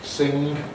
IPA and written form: sɪŋg (sing)